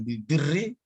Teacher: ada perkataan bil birri, maka dia kedua-duanya menjadi tarkik. Jadi tidak ada tarkik tafkim atau tafkim tarkik, tidak ada.